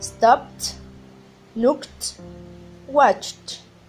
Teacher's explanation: Como son sonidos sordos, no crean vibración en las cuerdas vocales